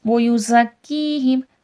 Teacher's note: زا صفیر ہے، سختی سیٹھی کے ساتھ پڑھا جائے گا